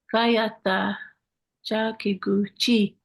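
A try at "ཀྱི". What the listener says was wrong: Ka, kikuchi, not chi. Ka, kayata kya. Ki, ki.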